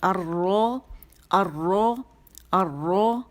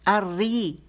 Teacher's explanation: اچھا زبر را جب زبر کے ساتھ ہوگی موٹی ہوگی تو اس میں تقریر زیادہ ہوگی، پیش کے ساتھ ہوگی تقریر زیادہ ہوگی. زیر کے ساتھ کیا ہوتا ہے؟ زیر کے ساتھ تقریر ذرا کم سنائی دیتی ہے